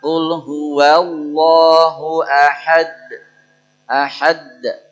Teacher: Jadi pantulan pada kolkolah itu seperti fathahnya.